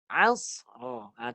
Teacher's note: Sod tu dipantulkan bunyi dia cantum dengan ra lah jadinya. Kalau tak ada qalqalah, dia hanya desiran saja, sofir.